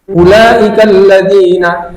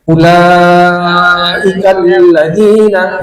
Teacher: Ulaika itu wajib mat, wajib muttasil namanya. Jadi wajib 4 sampai 5 harokat. Kalau kita baca ulaika alladzina, itu salah.